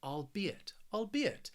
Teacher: this word has three syllables and the stress is on that second syllable